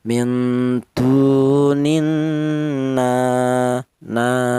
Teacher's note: Berhubung ada alifnya mad thobi'i, maka cara bacanya yaitu dipanjangkan dua harakat atau dua ketukan. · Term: matobi